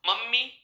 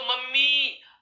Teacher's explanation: मम्मी, ये तो पास में, अगर दूर हो गए तो मम्मी। अर्थात ये अंतिम वाली जो ध्वनि है दीर्घ ई, इसको हमने लंबे समय तक उच्चारित कर दिया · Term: प्लूत रूप